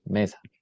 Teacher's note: Sur le plan phonétique, il se caractérise par les éléments suivants. La voyelle E est prononcée comme une voyelle ouverte antérieure non arrondie et similaire à la prononciation du E dans le mot pecho.